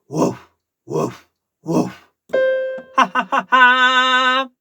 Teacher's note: Non è un graffiato. No corde vere, no nota.